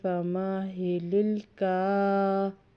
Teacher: کاف کے اوپر کھڑی زبر ہے، 2 الف کے برابر لمبا کریں گے